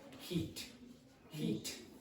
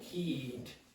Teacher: when I say this word, heat, it's a little bit quicker than when I say heed.